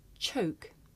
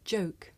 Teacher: the voiceless sound that you hear at the beginning of the word choke and the voiced sound that you hear at the beginning of the word joke